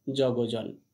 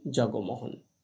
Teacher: এবার আমরা দেখে নেব ব্যঞ্জন সন্ধির 2 নম্বর নিয়মটিকে। পরপদের প্রথম বর্ণ ঘোষ বর্ণ, পূর্বপদের শেষ ব্যঞ্জন লোপ হয়